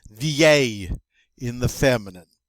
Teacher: that double L is pronounced like a Y